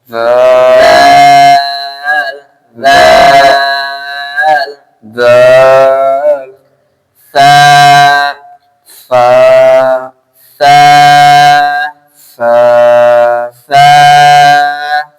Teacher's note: জিবার আগা সানায়া উলাইয়া 2 দাঁতের আগার সঙ্গে লাগিয়ে, মানে এই 2টা দাঁত, 2টা সানায়া দাঁতের আগাই, জিভের আগা আর দাঁতের আগা, কোন দাঁতের?